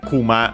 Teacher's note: accent on the last syllable means bear